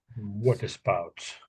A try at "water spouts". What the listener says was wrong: yeah, that's pretty good.